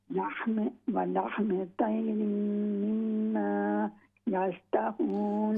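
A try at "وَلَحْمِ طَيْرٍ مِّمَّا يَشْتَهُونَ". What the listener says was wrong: ہاں جی تے کی بجائے تو ہے تو طیرم.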